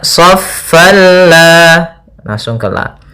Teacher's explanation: Maka ini hukum tajwidnya kita namakan dengan idgham bila gunnah atau idgham biduni gunnah. Idgham yang tidak disertai dengan gunnah, sehingga hanya masuk saja tanwinnya ke huruf lam tanpa kita tahan